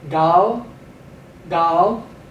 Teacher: Okay, ayin, pethak, lamed. We're giving the ayin a slight G pronunciation. So this would be gal, gal, on account of.